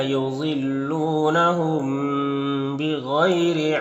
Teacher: میم ساکن کے بعد با ہے تو یہاں پر اخفاء شفوی ہوگا، غنہ اور اخفاء کے ساتھ پڑھیں گے